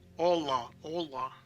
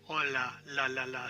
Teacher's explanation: it's like a thick L that Russian has or Catalan has